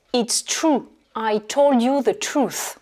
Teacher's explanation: Et the truth, la différence, c'est qu'à la fin, on a le TH anglais.